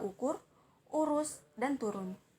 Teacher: termasuk dalam vokal belakang termasuk dalam tinggi bawah mulut membundar serta termasuk dalam vokal tertutup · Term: u kapital, U kapital